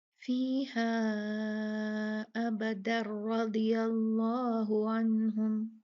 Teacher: जब रुके तो इदगाम नहीं होगा, जब मिलाया रा के साथ तो इदगाम होगा